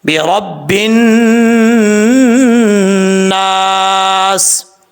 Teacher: آگے جو لاسٹ پہ ہے سین ہے، سین سیٹی کے ساتھ پڑھا جاتا ہے